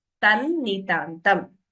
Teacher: While chanting, we combine the Sandhi and chant it as Tan Nitantam.